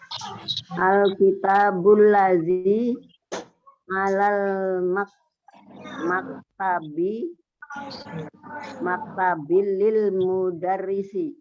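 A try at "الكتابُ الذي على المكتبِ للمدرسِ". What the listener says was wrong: Ahsanti.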